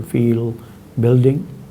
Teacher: The velarized L occurs word finally or when followed by a consonant, for example, feel, building.